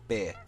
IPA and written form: bɪə (beer)